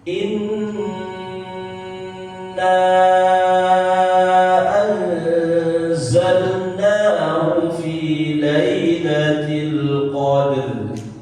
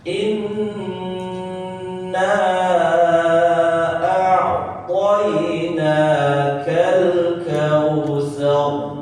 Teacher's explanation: Karena mendengar ada huruf yang ditahan itu nunnya berarti dia bertasydid. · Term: nun tasydid